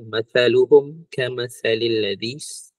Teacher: Kita bila kita sebut sa ni, lidah kena keluar. Jadi tak masa dia ada lidah keluar.